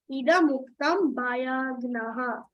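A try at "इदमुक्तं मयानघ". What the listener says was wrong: Not ba. Ma. Maya nakha.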